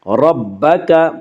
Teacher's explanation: ربک کے را کو پر پڑھا جائے گا۔ اس کا قاعدہ یہ ہے کہ را کے اوپر زبر پیش آئے تو را کو پر پڑھا جائے گا، را کے نیچے زیر آئے تو را کو باریک پڑھا جائے گا، یا را کے اوپر زبر ہے اس سے را کو پر پڑھیں گے۔